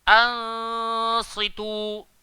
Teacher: Dan dia nak masuk dalam sad, huruf sad ni kita kena tebal lah kan. So dengungnya pun tebal. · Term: ikhfa